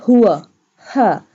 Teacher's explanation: ha pronounced from the bottom part of the throat